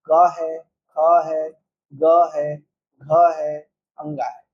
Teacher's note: इनका उच्चारण स्थल, जैसे क वाले जो ग्रुप है इसको हम लोग कंठ से, कहाँ से उच्चारित करते हैं? कंठ से उच्चारित करते हैं।